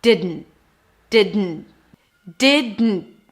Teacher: We have de and then it's a D, and then you release the air through the nose. That's technically the N. And then you stop it abruptly. That's the T at the end.